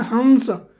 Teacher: तो हंस ये हमारे कहाँ से हो रहा है, नाक से प्रोनाउंस हो रहा है, ठीक है, नाक से अधिक और मुंह से कम हवा निकल रही है